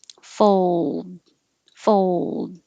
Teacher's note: air comes out the sides of your tongue, and when you say D, the sides of the tongue seal off the airflow. Fold, fold, but hold the L position long enough that you can hear the L sound.